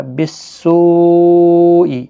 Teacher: مد متصل ہے، 4 الف کی مقدار کے برابر کھینچ کر پڑھیں گے